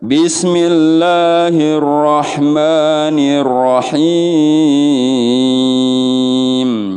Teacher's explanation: ada him, namanya mad arid li sukun. Dipanjangin boleh dari 3, 4, 5, 6. 3 sampai 6 harokat boleh.